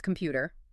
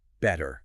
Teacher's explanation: But in American English, if a T is between two vowel sounds, it softens. It turns into this sound called a flap, which sounds a lot like a quick, soft D.